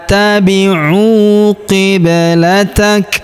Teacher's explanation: huruf ba berharokat sukun, maka kita pantulkan atau kita qalqalahkan